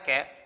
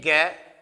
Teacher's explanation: ठीक है भाई, और इसका उच्चारण स्थान जो होता है वो क्या होता है, इसका उच्चारण स्थान होता है कंठ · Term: कै वर्ग